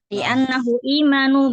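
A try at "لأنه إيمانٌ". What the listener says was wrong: imanun. Li'annahu imanun khabar anna marfu tanwin.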